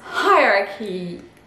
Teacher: Alors je vous mets la transcription, hierarchy, hierarchy. Voilà, donc le CH devient K. Le H est bien prononcé et on a une petite diphtongue dans la transcription phonétique